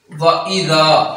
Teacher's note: ذال کو دو حرکات کے برابر لمبا کرنا ہے کیونکہ اس کے اوپر زبر ہے اور اس کے آگے الف آ رہا ہے، اور جب زبر والے حرف کے آگے ساتھ ہی الف ہو تو پھر اس حرف کو ہم نے دو حرکات کے برابر لمبا کرنا ہوتا ہے۔